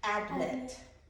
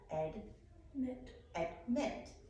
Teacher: We put the accent on the second syllable.